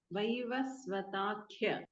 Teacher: ತ ಅಲ್ಪಪ್ರಾಣ ಕ ಮಹಾಪ್ರಾಣ